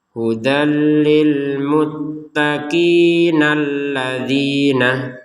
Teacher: Kalau digabungkan kata alladzina ini dengan kata sebelumnya al-muttaqin, lil muttaqin ini, maka hamzah ini tidak terbaca sama sekali. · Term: hamzatul wasl